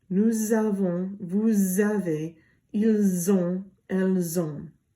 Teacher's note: It means that the S is going to make a Z sound so that it flows better. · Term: une liaison